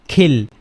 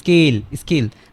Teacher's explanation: দেখুন যে অ্যাসপিরেটিভ সাউন্ড কিন্তু হচ্ছে না, মানে এস যখন আসতেছে তখন এই সাউন্ডটা কিন্তু ব্লক হয়ে যাচ্ছে অলরেডি।